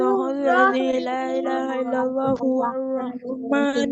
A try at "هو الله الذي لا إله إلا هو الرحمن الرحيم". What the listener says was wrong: তোমরা দুইটা জিনিস ভুল করতেছো। কেউ কেউ বলতেছো ইল্লাল্লাহু আর রহমানুর রহিম, তো ইল্লাল্লাহ না, ইল্লাহু আর রহমানুর রহিম। আবার কেউ ভুল করতেছো, রহমানির বলতেছো, নূর না বলে। ঠিক আছে, বিসমিল্লাহর মতো বলতেছো। হ্যাঁ, তো এই দুইটা জিনিস খেয়াল রাখবে সবাই।